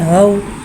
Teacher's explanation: वाव साकिन है, वाव साकिन से पहले ज़बर आ रहा है, वाउलिन हो रहा है, लिहाजा वाउलिन को बगैर खींचे बगैर झटका दिए नरमी से मारूफ पढ़ेंगे और वाउलिन को होठों की गुलाई के साथ अदा करके पढ़ेंगे